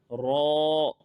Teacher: यहां अलिफ से पहले र के ऊपर जबर आ रही है र को मोटा भी पढ़ेंगे और लंबा भी करेंगे